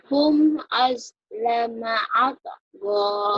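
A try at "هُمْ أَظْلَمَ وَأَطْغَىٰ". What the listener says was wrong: Wahnya ketinggalan. Atgo. Wahnya ketinggalan. Hum auslama wa altaga.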